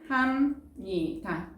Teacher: 비음이 아닌 비읍이, 비음인 니은과 만나 비음으로 바뀌고 있으니까 비음화 일어났습니다